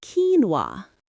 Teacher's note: The stress is on the first syllable and that middle part, the no is almost swallowed by the no sound at the end.